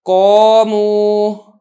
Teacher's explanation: اب یہ دیکھیں قاف، یہ تو حروف مستعلیہ میں سے ہے، ہم نے اس کو موٹا کرنا ہی ہے، لیکن جو الف ہے یہ چونکہ حروف مستعلیہ کے بعد آ رہا ہے، لہذا الف بھی موٹا کر کے پڑھا جا رہا ہے